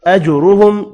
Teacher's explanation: اذلہم یہاں بھی ادغام بلا غنہ ہوگا، میم کا اظہار ہوگا۔ اجرہم جیم ساکن پر قلقلہ کریں گے، را پر پڑا جائے گا پیش کی وجہ سے، یہاں میم کا اظہار ہوگا۔